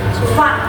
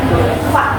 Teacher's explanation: huruf fa itu keluar ketika gigi atas dan bibir bawah itu ketemu